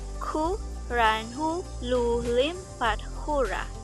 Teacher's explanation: The stress always falls on the first syllable and then on every other syllable after that. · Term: alternating